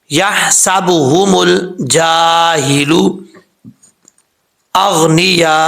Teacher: یہاں پر مد متصل ہے، 5 الف کے برابر آپ اس کو لمبا کر سکتے ہیں